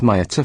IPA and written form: miˈɑːtə (Miata)